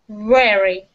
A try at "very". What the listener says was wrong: Very. So after you put your teeth on your lip, keep it there.